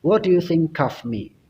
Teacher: jadi di situ huruf K yang ada di kata think itu digabungkan dengan of. Jadi dibaca cough.